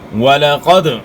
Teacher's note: قاف موٹے حروف میں سے قاف کو اپنے موٹا ادا کرنا ہے. دال حروف قلقلہ میں سے ہے، جو 5 حروف ہیں حروف قلقلہ، قاف طا با جیم دال، جن کا مجموعہ قطب و جد ہے.